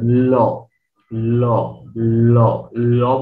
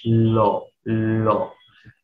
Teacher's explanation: এই লটা উচ্চারণের সময় জিহ্বার 2 পাশ দিয়ে বের হয়, এই জন্য ল হচ্ছে পার্শ্বিক বর্ণ